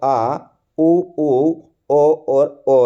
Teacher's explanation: जिन स्वरों का उच्चारण जीहा के पश्य भाग से किया जाता है वे पश्य स्वर कहलाते हैं